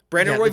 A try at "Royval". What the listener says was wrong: You're saying it like there's an E in there, and it's embarrassing for.